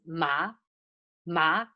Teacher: Ma, it's high rising sound.